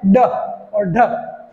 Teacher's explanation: तो हमारी जो जीवा होती है, इनको ये जो दो वर्ण है, इनको बोलते समय हमारी जीवा एकदम झटके से गिरती है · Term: उत्क्षिप्त व्यंजन